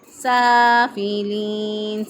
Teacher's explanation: لام کے اوپر زبر ہے تو لام کو باریک ہی پڑھیں گے، موٹا نہیں پڑھیں گے